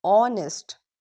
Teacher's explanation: Because H is silent, the word starts with the vowel sound. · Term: Silent h